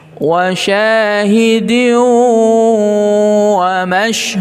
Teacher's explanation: Gunnahnya kurang, ya. Wa syahidin, didengungkan, ya, ditahan 2 harakat